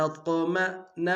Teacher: طا کو موٹا ادا کریں گے، قلقلہ ہے قلقلہ بھی کریں گے